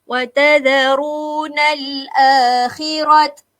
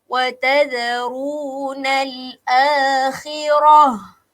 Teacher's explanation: Okey, apabila berakhir dengan huruf ta kita panggil ta ni ta marbutah ini, apabila berakhir dengan huruf ta, maka tuan dan puan perlu matikan dia, tukarkan dia dengan huruf ha. Jangan pula pergi baca wa tadharunal akhirat. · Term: mati dengan ha